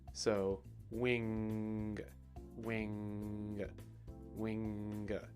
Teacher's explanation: it's almost like you're holding something down and then you release it to make that kind of pop of a G sound